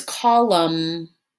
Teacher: spelled c o l u m and the word is column it doesn't have an n sound at the end · It doesn't have an N sound at the end. That N is silent. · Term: silent N